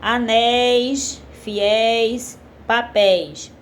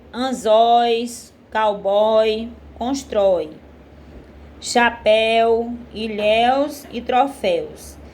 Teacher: o som final dessas palavras é aberto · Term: som aberto